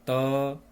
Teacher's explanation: त बोलने पर हमें दांत की सहायता लेना पड़ रहा है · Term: दंत्य वर्ण